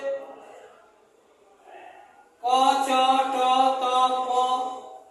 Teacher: इन सबको बोलने में मुंह से कम हवा बाहर निकल रही है, वायु निकल रही है, प्राण निकल रहे हैं, इसलिए ये अल्प प्राण कहला।